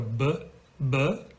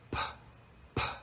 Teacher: So the B and the P, in terms of voiced and voiceless, are companion sounds.